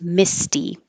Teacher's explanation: the T stays a t because the S before it is voiceless so there's no vibration no sound in the throat